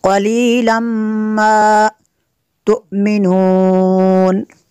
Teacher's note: तनवीन के बाद मीम है हुरूफ़ अरमल उनमें से, तो यहाँ पे इदगाम होगा इसलिए गुन्ना करेंगे।